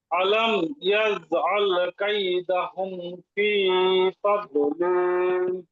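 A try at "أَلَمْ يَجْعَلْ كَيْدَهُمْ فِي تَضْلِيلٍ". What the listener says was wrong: জি এবার ঠিক আছে মাশাআল্লাহ।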